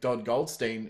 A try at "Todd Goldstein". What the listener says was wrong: You say Todd or like Dodd? Sound like Dodd. You sound like Dodd Goldstein. Correct me if I'm wrong. I heard a D in there.